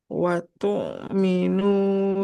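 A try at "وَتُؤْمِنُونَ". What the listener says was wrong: Jangan watu. Kalau watu dia seperti ain nanti. Watu minuna.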